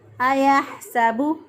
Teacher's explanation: حا جو ہے اس کو وسط حلق سے ادا کیا ، سین کی ادائیگی میں سیٹی جیسی آواز آنی چاہیے، ایحسب